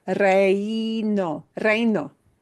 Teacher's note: It's two vowels right next to each other, and the first vowel slides right into the next vowel. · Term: true diphthong